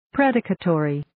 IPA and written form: 'predɪkətəriː (Predicatory)